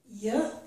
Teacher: when we make this sound, the middle of the tongue is raised, but the front of the tongue is low behind the front teeth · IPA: /j/